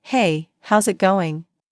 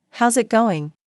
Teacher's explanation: Notice that they don't always say every word slowly and clearly. Instead, how is it going becomes how's it going? The is disappears and the final G in going often softens. This is called connected speech.